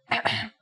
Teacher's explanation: the closest english counterpart to the sound is h the only difference is that it comes from a point deeper down in your throat